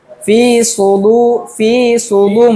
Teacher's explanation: কিন্তু সদের সু উচ্চারণটা হবে যে একটু মুখ মোটা করে ফি সুদু ফি সুদু মুখের ভিতরে একটু হাওয়া জমবে ফিদুরি ফিদুরি